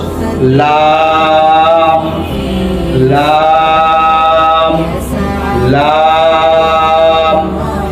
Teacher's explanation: সামনের উপরে দাঁতের মাড়ির সাথে লাগিয়ে লাম।